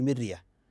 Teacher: الرا هنا ما حكمها مرققه قبلها مكسور